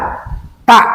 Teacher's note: Jadi tak itu adalah ujung lidah dengan gusi gigi yang atas.